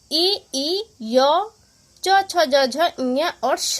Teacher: ई, य, च, छ, ज, झ, ञ और श आपका कहाँ से बोला जाता है? तालु से।